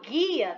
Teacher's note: a consoante e vogal aí elas representam um som só então quando eu falo guia tá saindo o som só do g e do ia · tá saindo o som só do G e do IA. O U, ele só fica ali de complemento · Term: dígrafos